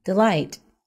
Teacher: the word stresses on the second syllable